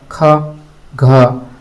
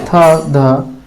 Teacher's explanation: जिनके उच्चारण में अधिक हवा निकले उन्हें महाप्राण कहते हैं। प्रत्येक वर्ग का दूसरा और चौथा वर्ण महाप्राण ध्वनि है।